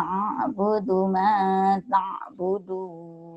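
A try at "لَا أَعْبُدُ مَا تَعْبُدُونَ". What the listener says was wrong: Dalnya jangan ragu-ragu, dalnya keras. La a'budu ma ta'budun.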